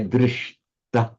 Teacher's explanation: But it's just a rule of sandhi that wherever you get a sh plus a t, always they both become retroflex like that. That's kind of inviolable rule.